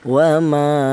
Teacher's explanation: Dibaca mad tha thobi'i panjangnya satu alif atau dua harakat atau dua ketukan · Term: mad thabi'i